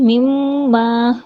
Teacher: میم مشدد اکمل غنہ